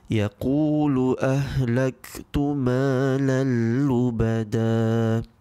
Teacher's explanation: In this example, we can see that the Tanwin in Malan is not read. Instead, it is being merged with the next huruf, which is a lam. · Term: Idgham bila Ghunnah